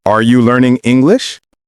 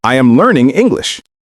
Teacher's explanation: The question goes up and the statement goes down.